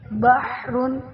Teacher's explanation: ح درمیان حلق سے رگڑ کھا کر نکلتی ہے